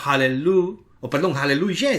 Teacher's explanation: aleluya tiene el acento justamente en ya. En la sílaba final.